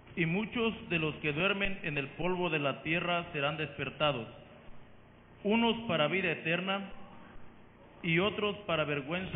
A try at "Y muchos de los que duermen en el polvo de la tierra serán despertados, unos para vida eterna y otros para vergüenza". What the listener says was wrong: Se comió la coma No se coma la coma.